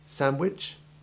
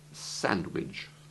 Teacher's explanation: I have just pronounced it with the soft CH sound, but it can also rhyme with fridge